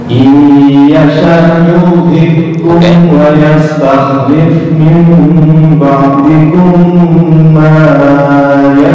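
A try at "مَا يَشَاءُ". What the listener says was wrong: Panjangan dua harokat aja di ma yasha. Panjangan dua harokat. Kurang dengung. Ba'dikum ma yasha'u kama ya, ba'dikum ma yasha' yang 5 harokat di sya, ma 2 harokat.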